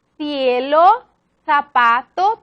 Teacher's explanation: la fricativa interdental sorda, esa representada por la C con E y con I